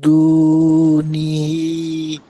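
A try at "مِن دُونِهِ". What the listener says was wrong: নি হিটাকে স্পষ্ট করেন, নিটাকে ফাস্ট করেন, হরকত হিটাকে লং আরো লং করেন।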